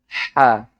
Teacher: Jadi kaf adalah lidah yang mengikutinya. Jika ha, lidah tidak mengikutinya. Jadi, itu murni dari tenggorokan, kan?